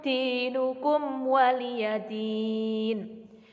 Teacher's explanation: mim sukun bertemu dengan wawu disebut dengan bacaan idhar syafawi, dibaca dengan jelas